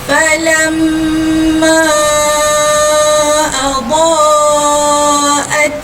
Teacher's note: Maka terjadinya hukum mad wajib muttasil. Mad wajib muttasil, maka perlu dibaca dengan 4 ataupun 5 harakat.